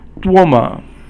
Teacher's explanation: 多 is 一 声, and 么 is actually 轻 声